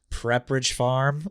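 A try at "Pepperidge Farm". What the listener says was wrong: Did you call it Prepperidge? Pepperidge. Pepperidge, Are you putting prep in it?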